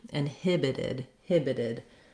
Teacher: vowel sounds and it sounds more like a d inhibited inhibited the stress is still the same with the main length and stress on the hib syllable the second syllable · don't let any air out when i change to inhibited inhibited this stopped t changes to a flap t because it's now between two vowel sounds and it sounds more like a d